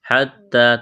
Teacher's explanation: تا میں سختی کریں گے، الف کے برابر کھینچنا ہے